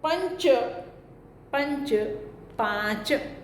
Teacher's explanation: બીજું લક્ષણ સંયુક્ત વ્યંજનોમાં પૂર્વ અવયવ તરીકે અનુનાસિક વ્યંજન હોય તો આગલો રસ્વ સ્વર દીર્ઘ થવાની સાથે સાનુનાસિક પણ બને છે